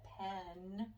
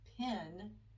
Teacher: you're dropping your jaw a little bit when you're saying pen as opposed to pin